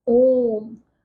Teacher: दीर्घ स्वर से भी अधिक समय लगता है बोलने में